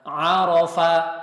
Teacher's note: Huruf ain di sini, tengah tenggorokan.